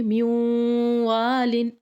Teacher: من یقل میوالن، دیکھیں یہاں پہ غنہ کریں گے، میوالن، آواز ناک میں لے کے جائیں گے